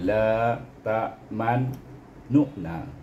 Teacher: kena baca dengan ismam, la ta'mannu'na, iaitu dengan memoncongkan bibir